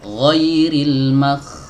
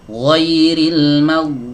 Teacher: Kalau nafasnya mengalir, apa yang terjadi? Kalau nafasnya ikut mengalir, maka dia akan berubah menjadi huruf kha. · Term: huruf ghain